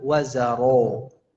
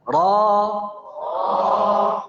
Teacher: bukan dengan mencucu, tapi angkat pangkal lidahnya, buka rahangnya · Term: tafkhimnya